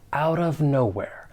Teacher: the final T in out, I am going to pronounce it as a flap T, and then I can link that with the vowel sound in of